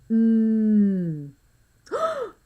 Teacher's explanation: We're really pressing our lips together when we make that sound.